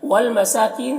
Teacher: سین میں کھڑا زبر ہے جو الف مدہ کی طرح ہے، کین میں یا مدہ ہے